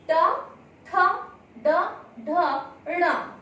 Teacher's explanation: इस वर्ण का उच्चारण स्थान हुआ मूर्धा, क्योंकि इन वर्ण को बोलते हुए मूर्धा से ध्वनि का उच्चारण होता है